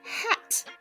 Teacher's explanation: listen for that short Snappy happy ah sound sounds like a in apple or cat now watch what happens